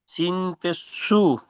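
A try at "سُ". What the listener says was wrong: সিন পেশ নেই, সিন ও পেশ সু, ও মাদ্দা একটু দেখে পড়েন, ও সেকেন্ড টান দিয়ে পেশ, সু টান দিয়ে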